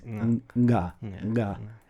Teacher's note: So there's the unvoiced version of it would be ka, and then the voiced version would be ga, and the elegant bidakuon way of saying ga is nga